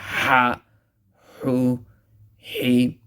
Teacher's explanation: Ha is pronounced harshly from the center of the throat.